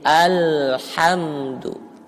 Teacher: huruf lam bukan huruf qalqalah, jadi jangan sampai mantul